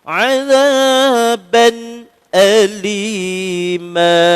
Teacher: kita kena baca dengan jelas bunyi tanwin tu, bunyi nun pada tanwin sebab depan dia huruf al-halqu.